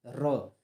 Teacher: ठीक, ये जो 2 हैं, ठीक, या इनको जो है अर्ध जो या है इसमें, ठीक, इसको हम लोग बोलते हैं अपने जीभ के पार्श्व, जो पीछे का जो भाग होता है उससे, पश्च भाग से इसकी ध्वनि निकलती है, र। र जो है, रा में हमारी जीभ लड़बड़ाती हुई आती है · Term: लुंठित